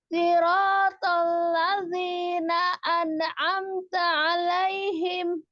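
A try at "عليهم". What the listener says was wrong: Alaihimnya datar Jangan diangkat. Alaihim. Jangan diangkat.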